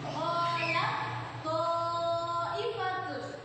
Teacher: Taknya itu lebur, langsung ke to. To-nya diberi tasydid, langsung ke to, berarti langsung monyong. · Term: idgham mutajanisain